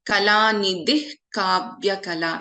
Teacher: So there is a visarga and then we have ka. So we do not chant the complete visarga here. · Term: half visarga